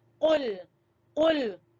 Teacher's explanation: آپ نے قاف کو موٹا کر کے پڑھنا ہے, پر کر کے پڑھنا ہے